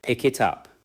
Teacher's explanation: In natural speech, the final consonant of pick connects to it, and the final sound of it connects to up. It may sound more like pick it up. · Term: consonant to vowel linking